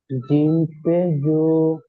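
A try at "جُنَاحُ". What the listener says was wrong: না, জু বলার সময় টান দিচ্ছেন কেন? জিম পেশ জু।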